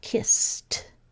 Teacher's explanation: there's no second syllable created so it's going to make the T sound